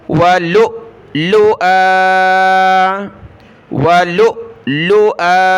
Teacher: اب دیکھیں حمزہ کے اوپر دو زبر کی تنوین ہے، اور دو زبر کی تنوین پر جب وقف ہوتا ہے تو الف کے ساتھ رکنا ہوگا کھینچ کر